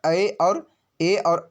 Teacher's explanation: कंठ तालव्य से ए और आई बोलेंगे